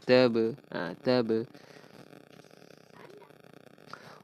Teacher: huruf ba bertanda sukun dan huruf ba huruf qalqalah. Akan ada lantunan sedikit. Qalqalah sughra.